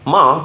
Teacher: For instance, in Mandarin, the word ma can mean four different things depending on the tone. With a high tone, ma means mother. With a rising tone, ma means hemp.